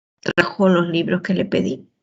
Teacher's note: Y la respuesta será sí o no, y hay una entonación ascendente.